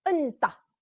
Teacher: Jadi bila entah, dia kena bunyi syua. Vokal tengah tu.